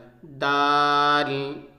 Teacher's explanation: دال جس جگہ سے دال نکلتا ہے یعنی دال کا جو مخرج ہے وہ یہی ہے جو تا کا مخرج تھا، تا اور دال ایک ہی جگہ سے نکلتا ہے، یعنی زبان کی نوک اور ثنایا علیہ کی جڑ، زبان کی نوک اور ثنایا علیہ کی جڑ سے دال ادا ہوتا ہے